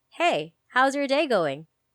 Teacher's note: the way it curves down and the tone changes at the end is what we use to refer as breaking rapport. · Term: final tonality